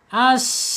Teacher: Secara makhraj ada di alisan ujung lidah menyentuh gigi seri bawah. Kemudian secara sifat ada di alhams. Ketika dia sukun menjadi keluar napasnya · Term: sin